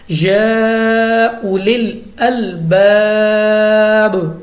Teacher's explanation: مد منفصل لگ رہی ہے کیونکہ حروف مدہ کے بعد حمزہ دوسرے کلمے میں ہے